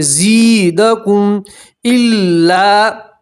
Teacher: یا مدہ اس لیے آپ ایک الف کے برابر کھینچیں گے